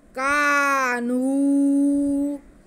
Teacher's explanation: ये वाऊ मद्दा और ये अलिफ मद्दा दोनों को एक जैसा खींचेंगे। कानू नाक में आवाज नहीं जानी चाहिए।